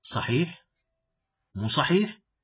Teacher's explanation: with rising intonation. It means I am expecting an answer from you.